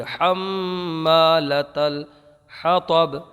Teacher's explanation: حمّا میں میم میں گنہ ہوگا، ایک الف رکیں گے، الف میں مدہ ہوگا اور حا کو برابر ادا کیجیے، حمّالَةَ الحطب، لت الحطب، پہلے لتل میں تا ہے، پھر حطب میں طا ہے، صاف ادا کیجیے، حمّالَةَ الحطب، لت الحطب۔